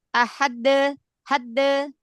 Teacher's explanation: Syiddah dulu di makhraj dal, baru qalqalah. Ahade, hadde, tapi cepat ya.